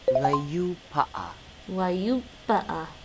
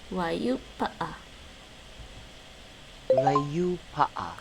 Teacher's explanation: That U is an extra long U, like in Japanese, when you have the long vowels.